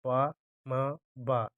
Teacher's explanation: पा, मा, बा इन तीनों को बोलने पर ओंठ आपस में मिलते हैं, तो ये तीनों ओष्ठ वर्ण है, ना नहीं है।